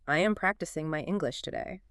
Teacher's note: notice how the voice goes down at the very end of the sentence